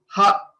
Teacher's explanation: So while we are saying ha, there is no restriction of the air anywhere. So the air which comes from our stomach comes out without any restrictions, and hence it is called aspirate.